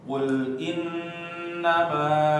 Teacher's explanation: jangan lupa nunnya ditahan